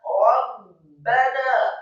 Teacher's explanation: kata rabbana rohnya tafkhim atau tebal 1 harokat, kemudian ba-nya ditasydidkan. Rabbana, nunnya yang fathah seharusnya 2 harokat, tetapi karena setelahnya langsung bertemu dengan huruf ghain yang sukun, maka nunnya dibaca 1 harokat dan langsung disambungkan ke huruf ghain yang sukun.